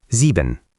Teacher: Stress the first syllable.